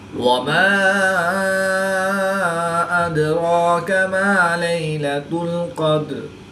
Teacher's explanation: الف مدہ کے بعد حمزہ دوسرے کلمے میں ہے، تو یہاں پر مد منفصل ہوگی، 2 سے 3 الف تک کھینچ کر پڑھیں گے۔ دال ساکن ہے، تو یہاں پر قلقلہ صغریٰ کر کے پڑھیں گے۔